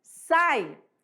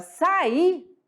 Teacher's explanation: sai é um ditongo agora sair é um hiato